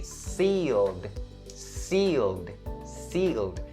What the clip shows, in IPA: siːld